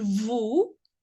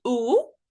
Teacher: it is a deep and rounded sound